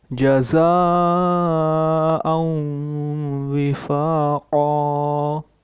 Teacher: یہ مد متصل ہے، کیونکہ حمزہ اسی کلمے میں ہے، اس لیے ہم 3 یا 4 الف کی مقدار اسے لمبا کریں گے